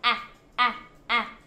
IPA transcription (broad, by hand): æ